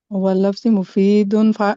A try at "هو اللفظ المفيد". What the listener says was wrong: ہاں یہ دیکھیں معرف پہ لام ہے نا، تنوین نہیں دیں گے. هو اللفظ المفید.